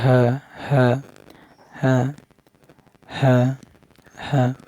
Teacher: হা এটা হলকের শুরু হতে স্বাভাবিক উচ্চারণ হবে হা এই হরফটা বলেন ত হরফ এটা মোটা হবে পুরো অপরদিকে